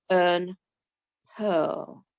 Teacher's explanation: in these words it makes the er sound not the ear but the er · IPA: /ɜ:/